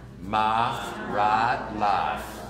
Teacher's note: so a becomes ah so my right live again the tip the diphthong becomes one sound